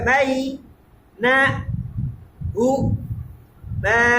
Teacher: বাই না হু মা, এরকম করে একটা মানে ধাক্কা দিয়ে থামতেছি। ধাক্কাটা দিলে হামজা ক্রিয়েট হবে, একটা হামজা তৈরি হবে শেষে। আর যদি এই ধাক্কাটা না দেন তাহলে নরম সফট হবে।